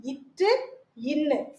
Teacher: நாவின் நுனி அன்னத்தின் நுனியை பொருந்துவதால் பிறக்கிறது